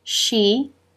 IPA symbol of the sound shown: ʃ